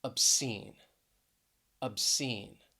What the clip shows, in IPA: əbˈsin